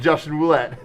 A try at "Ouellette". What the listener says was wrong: Justin Ouellette. It was he dropped the R. The R is silent.